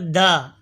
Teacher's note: दाल जबान की नोक और ऊपर के दांतों की जड़ से अदा होता है